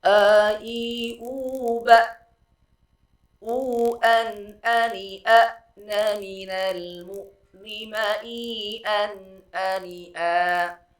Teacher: Jadi pembacaan huruf hamzah ini karena hamzah memiliki atau sifatnya adalah sifat syiddah, harus tertahan, aliran suara tidak mengalir, maka harus tegas di dalam pengucapan huruf hamzah.